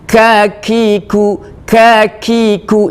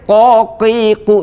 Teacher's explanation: Kalau qaf punya sifat qalqalah, kalau ka punya sifat hamas. Jadi huruf kaf ini kita harus dikeluarkan udaranya. · tidak boleh mengeluarkan udara karena qaf itu bukan huruf hamas tapi huruf jahr, huruf yang dimana huruf ini tidak boleh mengeluarkan udara.